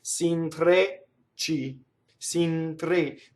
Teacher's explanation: Notice the N touching the T.